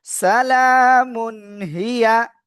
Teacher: স্পষ্ট আকারে পড়ব কোন গুন্না করব না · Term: ইজার